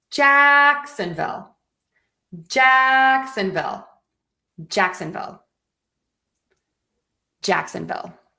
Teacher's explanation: for Jacksonville, we are going to stress the Jack